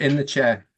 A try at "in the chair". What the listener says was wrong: In the chair. It's not in the chair, okay? It's in the chair, okay? There's no R, okay?